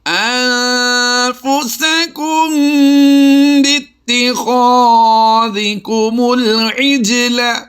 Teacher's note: جیم پر ہم نے کلکلا کرنا ہے اور لام کو لمبا نہیں کریں گے